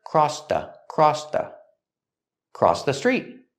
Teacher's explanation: with crossed in the past, we have the T sound. It links to the next word, the. Together, crossed the.